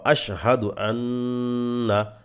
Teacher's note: আশহাদু আন্না নুনে ওয়াজিব গুনাহ করবেন অবশ্যই